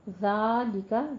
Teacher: ذال نرمی سے پڑھیں گے، اس میں سیٹی کی آواز نہیں ادا کرنی اور اوپر فتح قائمہ ہے.